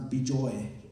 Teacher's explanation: In Bengal, they pronounce Bijoy. The A becomes O. It's not. It's a Bengali like tweak.